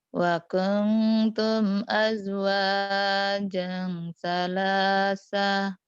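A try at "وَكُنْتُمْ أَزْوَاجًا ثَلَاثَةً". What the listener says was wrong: Wa kuntum azwajan salasah. Zai sama jim. Az. Aznya rapuh. Zai. Azwajang. Baru jangnya keras. Azwajan salas. Kayaknya kalau kalau minggu depan kalau mau ini lagi, sebaiknya belajar Ayuba deh makhrajnya ya. Ada beberapa huruf yang masih bias gitu.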